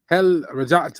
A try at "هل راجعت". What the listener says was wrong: No, there's an alif there. راجعت.